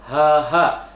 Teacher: Ya, yang kedua ada ha, hanya ha besar, ha. Jadi bisa dirasakan itu dari pangkal tenggorokan. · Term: asqal halqi